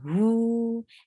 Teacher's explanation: Circle your lips well for dhamma, who, and it is 2 counts long. Why? Because there is waw sakina, and before waw sakina you find dhamma.